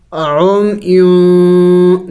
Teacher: ہم نے اخفا کر لیا، یعنی ناک میں آواز چھپا لیا۔